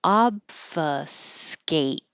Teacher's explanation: close your lips for the B but don't release the B just hold them closed until you open with the top teeth behind the bottom lip to F